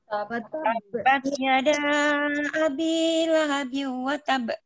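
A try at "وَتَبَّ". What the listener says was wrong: Bukan watab. Ah, betul, ditasdidkan dulu watab. Jadi dia akan lebih kuat lagi ketika dia bertasdid.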